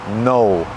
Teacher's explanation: you start to close your mouth and you get that W sound